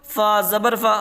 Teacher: زبر کو جلدی پڑھیں، تھوڑا بھی نہ کھینچیں، معروف پڑھیں، مجہول آواز سے بچیں، کیونکہ حرکت ہے.